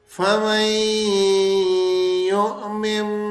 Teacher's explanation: نون ساکن کے بعد یرملون کا یا آ رہا تھا تو یہ تو ہم نے غنے کے ساتھ اس کو ملا دیا